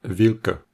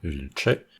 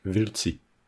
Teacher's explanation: le k d'origine alterne avec deux versions palatalisées de ce k, le č et le c